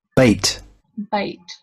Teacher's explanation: so it's moving from e to I. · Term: diphthong e and I